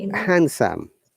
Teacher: in handsome there is no d sound